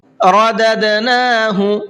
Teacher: یہاں پر یہ دال ہے اور دال ساکن ہوتا ہے تو اس کے اندر بھی قلقلہ کرتے ہیں